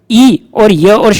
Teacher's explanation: ई और य और श का उच्चारण स्थान तालु होता है